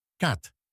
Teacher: El primer fonema se pronuncia de manera similar a una mezcla rápida entre la E y la A en español, como si dijéramos EA en un solo sonido. Este es un sonido corto y abierto.